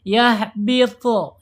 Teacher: huruf to ini mempunyai sifat isti'la, terangkat lidahnya ketika dibaca ya. Yahbitu, ya, naik lidahnya.